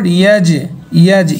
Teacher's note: ইয়া জিম জবর ইয়াজ, ইয়াজ, জিমের আওয়াজটা, জিম হরফের কলকলা আওয়াজটা নিম্নগামী হবে